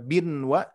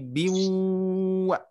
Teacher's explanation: ada tanwin bertemu waw bertasdid, termasuk idgham bi gunnah, yang mana kita harus memasukkan huruf ke wawunya. Jadi tidak bin wa tapi biwa ya, harus ditahan.